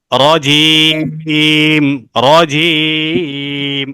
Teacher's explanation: জিমটা একটু শক্ত করে না, জিব্বার মাঝখানটা উপরের সাথে লাগিয়ে। জিম, জিম, এভাবে।